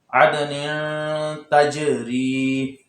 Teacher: یہاں پہ عد دال ساکن ہے اور حروف قلقلہ ہے تو قلقلہ بھی ظاہر ہونا چاہیے۔